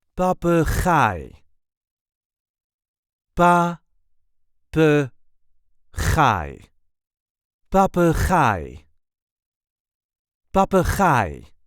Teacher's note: There is a light emphasis on the last syllable.